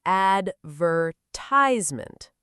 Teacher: In American English, the stress falls on the third syllable.